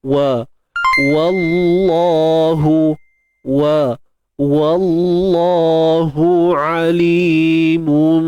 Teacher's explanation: Kalimah Allah kita baca dengan tebal. Sebab sebelum dia berbaris atas. Cuma hati-hati pada waw tu, jangan kita tebalkan.